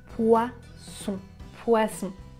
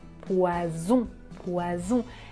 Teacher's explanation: S, z, z, poisson, poison. Ici, je n'utilise pas la voix, mais quand je prononce le son z, z, j'utilise la voix.